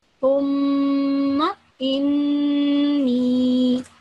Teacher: And you immediately you remember, okay, this was the rule that if meme has a shadda on it, or if noon has a shadda on it, if, then I have to give it a nasal sound and holding in it for 2 seconds